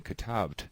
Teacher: However, when I'm saying katabt, it's impossible phonetically for me to say those 2 consonants without anything in between them, to be truly silent between them